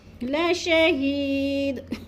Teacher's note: لشہید کی یا کو تھوڑا سا لمبا کرنا ہے، کیونکہ یا مدہ ہے